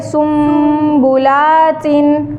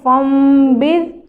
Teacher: ابھی کیا ہو رہا ہے کہ نون کو ہم نے میم کی آواز میں بدل دیا, اور نون کو میم کی آواز میں بدل دینا ہی اقلاب ہوتا ہے